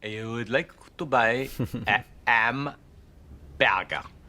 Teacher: also see H dropping that's more familiar to us now I.E H is being dropped before vowels